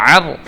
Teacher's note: عین جو ہے وہ ہم نے حلق سے ادا کرنا ہوتا ہے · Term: حروف حلقی